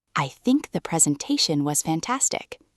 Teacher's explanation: They create a rhythm where the time between think and ta and fan is roughly consistent.